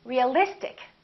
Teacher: we don't stress the suffix, but we stress the syllable immediately before the suffix.